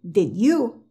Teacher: ahora cuando ellos están conversando de forma fluida ellos sí dicen la de pero no dicen la de tan marcada